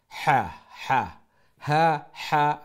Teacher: ছোট হা যেটা একটা গলার একেবারে সিনার উপর তো নিয়ে হা হা, আর বড় হা যেটা মিডল অফ দ্য থ্রোট গলার মধ্যখান